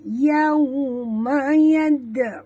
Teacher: ya dengan waw dua-duanya adalah huruf lin. Maka kita muncungkan mulut.